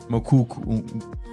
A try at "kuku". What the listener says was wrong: No, remove the mu. Kuku. But when you say it sounds wrong.